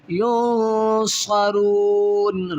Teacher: نون ساکن کے بعد صاد ہے اور حروف اخفا میں ہے، تو یہاں نون پر اخفا مال غنہ کیا جائے گا